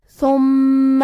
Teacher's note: یہاں میم پہ تشدید ہے لہذا ہمیں 2 حرف کے برابر میم کو پڑھنا ہے